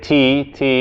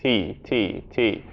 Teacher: the tongue is hitting the teeth